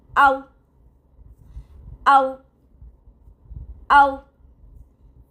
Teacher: हम अंग्रेजी के वी की आवाज में ना निकालें। होठों को गोल करके ही पढ़ें। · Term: वाव